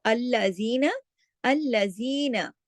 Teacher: ये जो या है ये कहलाता है या मद्दा, दो हरकत ये खींचा जाता है और बारीक है, सारे हुरूफ बारीक हैं।